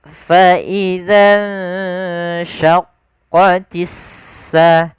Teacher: Kemudian pada lafal alif lam, di sini ada alif lam syamsiyah, yaitu huruf alif dan lam yang ditulis tapi tidak dibaca huruf lamnya, tidak dibaca al sama, tapi langsung ke sin. Kita namakan dengan, ada juga yang menamakan dengan idgham syamsiyah, yaitu idgham yang dimasukkan, yaitu huruf lamnya dimasukkan ke huruf shin.